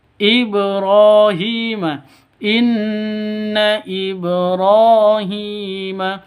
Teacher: ba-nya berharokat sukun, berarti hukum qalqalah berlaku. Jadi ini huruf qalqalah, qaf, ta, ba, jim, dal ada 5, ini termasuk ba, syaratnya sukun, ini sudah memenuhi syarat. · ra panjang 2 ketukan karena ada alif diawali dengan fathah. Alif diawali dengan fathah, panjang 2 ketukan karena mad asli atau matobi'i. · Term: Qalqalah sughra